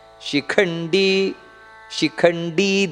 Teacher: ಖ ಅನ್ನೋದು ಮಹಾಪ್ರಾಣ ಶಿಖಂಡಿ